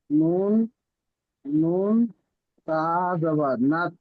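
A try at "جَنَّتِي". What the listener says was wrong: না, নুন জবর না। না, নুন জবর না, তা ইয়াজের তি।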